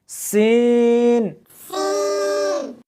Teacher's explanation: اس حرف کو جب پڑھیں گے تو سیٹی کی آواز آنی چاہیے